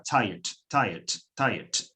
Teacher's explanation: esa schwa, esa vocal débil que va delante del sonido T final, casi que no se pronuncia. Aún así, contaría como sílaba.